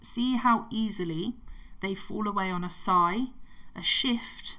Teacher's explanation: the soft sounds created by sibilance could emphasize that idea of the wind changing direction